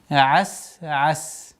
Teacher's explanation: При остановке фатха аннулируется, уходит сукун.